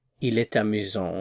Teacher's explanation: And there's liaison. You hear the T because a vowel follows.